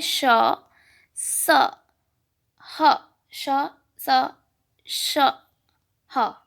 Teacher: जिन वर्णों के उच्चारण में वायु उच्चारण स्थान से छूकर सीटी की ध्वनि के समान बाहर निकलती है वे ऊष्म व्यंजन कहलाते हैं